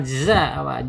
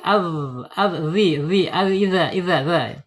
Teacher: Jadi waidza ada di ujung lidah ujung lidahnya menyentuh gigi seri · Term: dzal